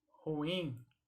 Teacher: Geralmente as pessoas pronunciam ruim, mas a pronúncia correta, ela é uma palavra oxítona, portanto o in é a sílaba que deve ser pronunciada mais forte